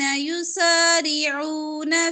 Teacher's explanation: يسارعون سارے حروف باریک پڑھیں گے يسارعون في الكفر را موٹا پڑھیں گے را کے نیچے زیر